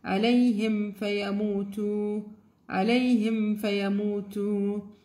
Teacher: إظهار means clear. So you will read the ميم without any nasal sound, without any غنة. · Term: إظهار شفوي